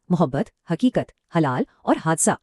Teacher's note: یہ وہ ہا ہے جس کی آواز گلے کی گہرائی یعنی حلق سے نکلتی ہے۔ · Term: ہائے خطی